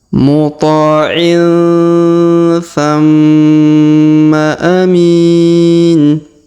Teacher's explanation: huruf ma di depannya berwarna merah, berharokat tasdid ya maksudnya, dan dikasih warna merah, maka ditahan dan ditekan 2-3 harokat ya.